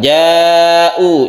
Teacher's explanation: Panjangnya sampai 2,5 alif atau 5 harokat. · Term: mad wajib muttasil